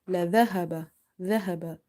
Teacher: Ha is from the bottom of the throat, okay, from the halqiya letters.